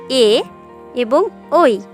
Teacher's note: এরপর আসছে এ এবং ওই, কণ্ঠ ও তালু, অর্থাৎ একই সাথে কণ্ঠ ও তালু দুটো একত্রিত হয়ে তারপর এ এবং ওই উচ্চারিত হয় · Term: কণ্ঠ তালু